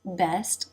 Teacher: the tip of the tongue is lightly touching behind the bottom front teeth and the tongue is raised a bit in the front mid to make this e vowel sound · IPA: [ɛ]